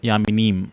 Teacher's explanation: At the end, you bring the lips together.